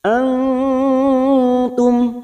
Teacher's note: mim sukun bertemu Ain Idhar syafawi kita baca jelas tanpa mendengung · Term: idhar safawi